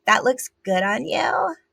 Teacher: So it's pitch, which is way up there. So it's really high. And then it's vocal fry. And then it's also up talk. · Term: sexy baby vocal affectation